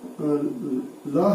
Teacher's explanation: ल का जो उच्चारण होता है वो मुख के अंदर जीभ के दोनों पार्श्व भागों से उच्चारण होने के कारण उनको पार्श्विक ध्वनि भी कहा जाता है।